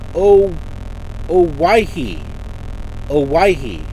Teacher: emphasis is placed on the second syllable